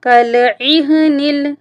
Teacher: عین جو ہے حروف حلقی ہے، اس لیے حلق سے اس کی ہم نے ادائیگی کرنی ہے